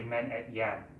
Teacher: So it's also pronounced, it's actually, most of the time it's not pronounced et yarın, because that's a lot of syllables and people talk really fast. They usually take out this R and this I, and they say men et yan.